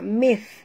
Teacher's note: jaga makhraj sa di hujung lidah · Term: huruf tha